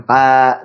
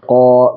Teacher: Jadi tebalkan ko, jangan ka tapi ko begitu ya.